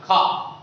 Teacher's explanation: तो खा का जब उच्चारण करते हो तो हवा ज्यादा निकलती है, मुंह द्वार पूरा होता है खा, है ना? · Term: महाप्राण